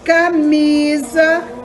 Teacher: é paroxítona porque a penúltima é a mais forte